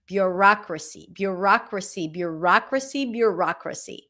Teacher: Primary stress is on the rock.